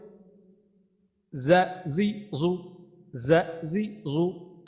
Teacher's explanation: তারপরেরটা হচ্ছে আমাদের যা, যা। তারপরে এই জাটার উচ্চারণ হচ্ছে আমাদের জিহ্বার আগার সামনের নিচের দুই দাঁতের আগার সাথে লাগায়।